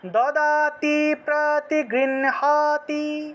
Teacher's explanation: নটাকে আগে উচ্চারণ করতে হয়, হটাকে পরে উচ্চারণ করতে হয়, কারণ ন হলো একটা স্পর্শ বর্ণ, আর হ এবং স্পর্শ বর্ণের মধ্যে স্পর্শ বর্ণটাকে আগে উচ্চারণ করতে হয়।